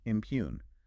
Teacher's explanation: 2 syllables. Stress on the second.